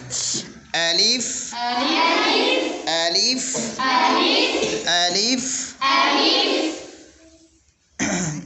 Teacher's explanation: اس کا مخارج الف کا بحالت مد منہ کے خالی حصے سے